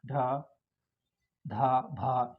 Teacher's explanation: महाप्राण के अंत में ह की आवाज़ निकलती हुई दिखाई देती है।